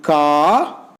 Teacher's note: Likewise, this is the RP vowel number 6, that is A, as in car. A is a back open unrounded vowel.